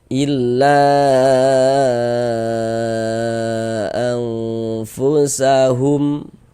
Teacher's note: Panjangnya mad jaiz munfasil itu boleh dibaca dengan panjang 4 sampai dengan 5 harokat.